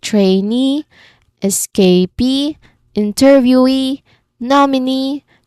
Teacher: That final syllable is where the voice lands loud and clear. · All those E suffixes are all stressed syllable for that particular words.